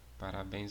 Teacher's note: é uma oxítona né a última sílaba forte